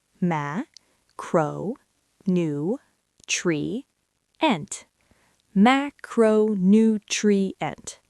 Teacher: The primary stress falls on the first syllable, ma.